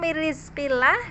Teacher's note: di situ nun ketemu ro adalah idgham bila gunnah ya. Idgham bila gunnah itu sempurna atau kamil di sini.